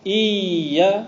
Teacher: یا کی آواز بند نہیں ہوتی ہے، یا کی آواز جاری رہتی ہے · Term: یا مشدد